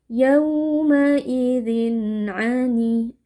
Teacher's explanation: Cara membacanya, tanwin kita baca jelas tanpa berdengung. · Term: izhar halqi